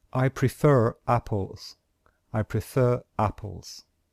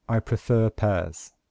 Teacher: the little R means we only pronounce the R at the end of prefer if the next word starts with a vowel. So if we say this, since the next word starts with a vowel, then we must pronounce this letter R.